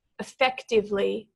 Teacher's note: So the emphasis is on the second syllable there.